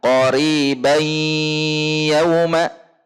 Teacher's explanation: Karena di sini di standar Madinah hal ini menunjukkan bahwa tidak terjadi peleburan secara sempurna dari tanwin kepada huruf ya, sehingga tanwinnya masih dibaca atau tampak gunnah dari tanwinnya kemudian diidghamkan kepada huruf ya secara zatnya saja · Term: idgham naqis